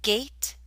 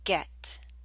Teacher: the a in gate is longer